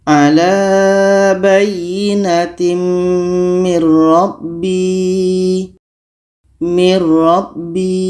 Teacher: ada nun mati bertemu ro ro huruf idgham Bila Ghunnah maka nun mati ini kita masukkan ke ro dan tidak boleh dengung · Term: idgham bila gunnah